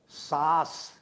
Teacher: अनुनासिक अर्थात जिसमे नाक और मुंह दोनों से प्रश्वास निकलता है इसको हम कहते हैं अनुनासिकता